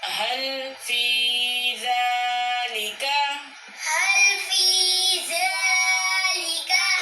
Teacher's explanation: هل في ذلك. ذالک کے زال کو کھینچ کے پڑھیں گے، کھڑی حرکات ہے، کھڑی حرکات کو ایک الف کے برابر کھینچ کے پڑھتے ہیں.